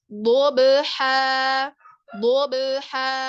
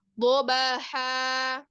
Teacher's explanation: Ada qalqalah ya, jadi dibacanya dobha. Dobha. Tidak boleh dobaha.